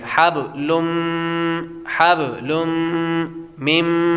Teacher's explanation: لم پر غنہ کریں گے، تنوین کے بعد میم حروف یرملون میں سے آ رہی ہے تو غنہ کریں گے